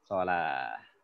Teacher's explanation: Tak shalah. Jadi bukan wa yuqimunas shalat, bukan tak ya, tapi jadi hak deh karena marbutoh di waqaf. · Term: tak marbutoh